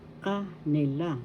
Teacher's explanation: So first and the third syllable has the accent, ka, nila.